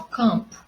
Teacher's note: Quando eu digo campo, eu não tenho o som do M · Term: som vocálico nasal